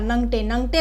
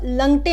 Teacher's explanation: ल कभी कभी न के बदले प्रयुक्त होता है। जैसे यहाँ देखिए नंगटे लिखा है, न में अनुस्वार, ग ट में एक आर, नंगटे, नंगटे को लंगटे में प्रयुक्त करता है।